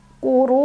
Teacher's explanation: Ra-nya dibunyikan secara tafkhim karena ra berbaris dan barisnya di atas, tebal. Jadi pangkal lidah kita diangkat.